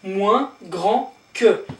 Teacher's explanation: moins will be less, and you don't pronounce this S here. Unless you've got a vowel here and then you will link with a Z liaison, as you know it already.